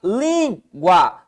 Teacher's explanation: Língua tá na penúltima sílaba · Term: Paroxítono